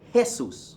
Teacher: Jesus hey soos is not Jay Seuss that's Portuguese pronunciation but in espanol you give it an H sound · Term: aspirated sound